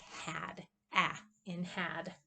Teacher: And here we have the ash, and it makes a sound like had, ah, in had. It's a low, front, lax, and unrounded.